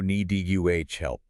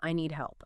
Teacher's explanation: the D is often very light or more likely almost completely swallowed because it comes before another consonant